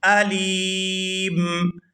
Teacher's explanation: وقف کی صورت میں میم جو ہے یہ ساکن ہو جائے گی